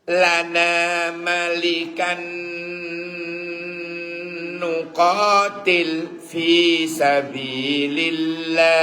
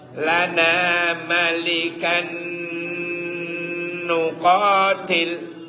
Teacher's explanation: Malikan tanwin ketemu nun. Tanwin ketemu nun sama dengan nun ketemu nun. Idgham bigun.